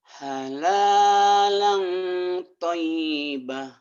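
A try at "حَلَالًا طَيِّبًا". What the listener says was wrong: ba panjang. Ulang lagi. Halala halala thayyiba.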